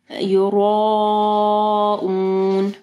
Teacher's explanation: مد کے بعد اگر حمزہ آئے گی تو 4 سے 5 حرکات کے برابر اس کو لمبا کرنا ہے